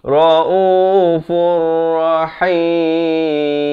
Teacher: Daripada raufun datang ra jadi raufur. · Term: idgham bila gunnah